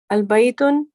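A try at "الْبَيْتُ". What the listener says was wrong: Without the tanween. Al-baytu. With one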